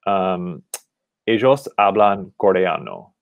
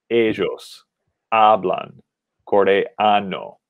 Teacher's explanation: So we have ellos ending in S, hablan ending in N, and coreano ending in O, which is a vowel. And in every single case, we have the stress on the second to last syllable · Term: penultimate syllable